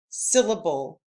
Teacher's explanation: the accent is on the first syllable of the word